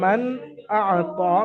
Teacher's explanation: এই ছটি অক্ষরের মধ্যে নুন সাকিন ও তানবিনের পরে যদি কোনো একটি অক্ষর আসে, তাহলে নুন সাকিন ও তানবিনের আওয়াজকে বিনা গুণায় জাহির করে বা বিনা গুণায় স্পষ্ট আওয়াজে পড়তে হয়, একে ইজহারে হালকির কায়দা বলে।